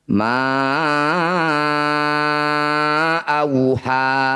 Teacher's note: Nah ini disebut bacaan mad jaiz munfasil, yaitu mad tabi'i bertemu hamzah di lain kata atau di 2 kata. Cara bacanya ma yang bertanda layar panjangkan 5 harokat atau 5 ketukan.